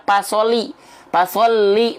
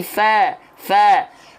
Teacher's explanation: ujung gigi seri atas kita menyentuh dengan badan atau perut bibir bawah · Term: huruf Fa